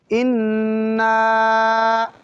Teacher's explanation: اِنَّا کی نون مشدد ہے اور لمبا کریں گے، لمبا کر کے پڑھیں گے